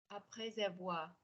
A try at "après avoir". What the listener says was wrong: Make sure that you go to a, not e. So you're going a smidge too high on. You can après avoir. Which isn't even where your accent goes in Australian English. Like some people's would go eh.